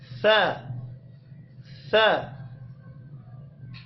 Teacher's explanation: تو آپ نے تا کے لیے ثنایا علیہ کی جڑ کے ساتھ زبان کی نوک کو لگانا ہے، تا کے لیے تا تا۔ جبکہ سا کے لیے زبان کی نوک کو ثنایا علیہ کی اندرونی نوک کے ساتھ لگانا ہے۔ ثنایا علیہ کی نوک یہ ہو گئی، اندرونی یہ والی سائڈ، سا، اور نرمی کے ساتھ ادا کریں گے سا سا۔